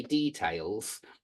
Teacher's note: here in the UK we say details and yeah attention to detail we put the stress on the d